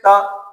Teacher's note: तो जीभ जो है दांत के पीछे टच हो रही है